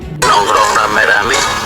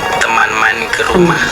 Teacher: Perubahan ini menunjukkan adanya proses fonologis, yaitu perubahan diftong ai menjadi vokal tunggal e serta perubahan vokal a menjadi e.